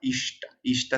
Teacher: Cuando una S cerebral le sigue una T, la T se cerebraliza por rebote.